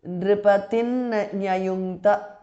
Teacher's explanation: because of sandhi anuswara changes to nu there